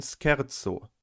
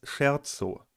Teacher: Im Italienischen gibt es die Regel, dass das <sch> als /sk/ gesprochen wird, zum Beispiel in scherzo